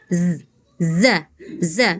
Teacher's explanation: Kemudian Kakak hati-hati huruf zai ya, tadi kurang tebal. Zai itu punya sifatnya sofir, artinya ada desisnya. Za. Tadi Kakak seperti huruf za ya, kurang tebal.